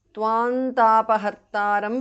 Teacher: Tvantapahartaram because of sandhi. Anuswara changes to the nasal of ta, tavarga, which is na.